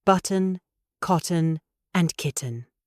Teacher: do use the glottal stop for words like button, cotton, and kitten